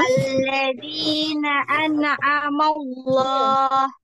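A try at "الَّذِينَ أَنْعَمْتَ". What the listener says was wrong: nah dialirkan lagi nunnya, nun sukun. Alladzina an'amallah.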